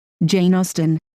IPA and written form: ˈdʒeɪn ˈɔːstən (Jane Austen)